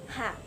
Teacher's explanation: laringal adalah bunyi yang dihasilkan oleh keterlibatan tenggorokan atau laring caranya udara yang keluar dari paru-paru digeserkan ke tenggorok